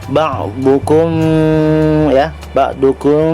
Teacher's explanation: Cara membacanya samar-samar antara huruf mim dan ba, dan bibir tidak tertutup rapat sempurna, ya, tidak tertutup rapat sempurna dia, tetapi seperti ada selembar kertas di antara dua bibir. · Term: ikhfa syafawi